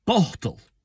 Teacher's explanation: it's got a dental T in the middle